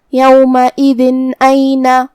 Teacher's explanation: الف حروف الاظہار میں سے ہے اور اظہار کا معنی ہے ظاہر کرنا، اور تنوین کی اصلیت نون ساکن ہے تو ہم یہاں تنوین ظاہر کریں گے اور اسے نون ساکن پڑھیں گے اور بغیر غنہ سے یہ حکم کو ادا کریں گے